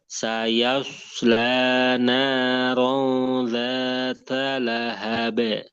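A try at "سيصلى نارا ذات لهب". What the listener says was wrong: Ro, ditahan dulu. Naron zata lahabi. saya jangan terlalu mencucu ya ketika menebalkan huruf yang tebal. Kalau dia nggak domah, nah itu nggak boleh mencucu bibirnya. Saya saya tetap dibuka.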